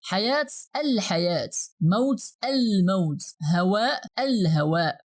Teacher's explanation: we here pronounce the whole AL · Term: Lunar letters